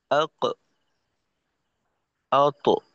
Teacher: কলকলার ধরনটা হবে জবরমুখী, পরিপূর্ণ জবরের মতো যেন না হয়, যেমন আক, আক এমনটা না, আক, আত, এরকম।